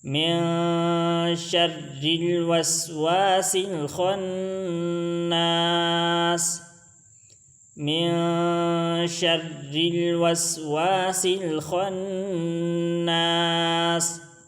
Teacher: من شر میں جو را ہے اس کو ہم باریک پڑھیں گے، کیونکہ اس کے نیچے زیر آیا ہوا ہے